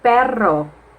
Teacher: moving on with the trail sound it is produced by vibrations it is made by the articulator being held in place and the airstream causing it to vibrate